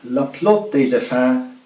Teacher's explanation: Notice that this last day has the S pronounced, days, since it's followed by effet, a vowel sound